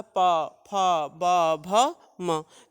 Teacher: तो पा, फा, ये तो ओठों को स्पर्श कर, दोनों ओठ जब स्पर्श करते हैं तो ये वर्ण उच्चारित होता है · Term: पवर्ग